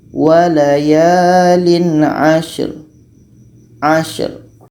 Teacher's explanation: shim ini sifatnya hamas, berangin.